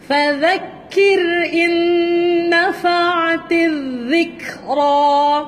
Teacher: Huruf dhal. Dhal hujung lidah keluar di antara gigi atas dan bawah.